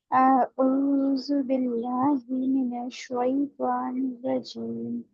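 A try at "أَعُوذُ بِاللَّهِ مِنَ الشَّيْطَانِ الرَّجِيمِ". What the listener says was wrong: देखिए आऊज़ु में अभी आइन की अदायगी अभी नहीं हो रही है आपकी, फिर से पढ़िए।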